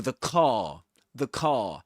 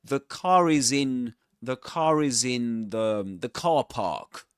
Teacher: we only pronounce the R sound in this accent when right after it comes a vowel sound. · Because in his accent, in Southern Standard British English, we don't pronounce the letter r or the sound r when right before silence. You know, if there's silence right after it, we don't pronounce it.